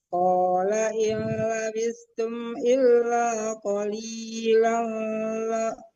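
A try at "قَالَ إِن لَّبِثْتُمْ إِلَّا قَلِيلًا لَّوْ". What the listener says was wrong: Hati-hati itu idgham bila gunnah. Jadi qalilallau, bukan qalilalla. Tidak boleh didengungkan qalilallau annakum. Kalau dibaca berhenti nggak apa-apa. Illa qalila.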